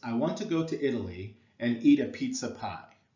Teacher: notice how want there is stressed go is stressed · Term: I AMS